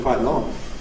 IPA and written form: ˈkwaɪʔ ˈlɔŋ (quite long)